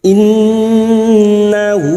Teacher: Innahu ha damir dengan vokal panjang yang tidak bertemu hamzah disebut mad silah qasirah.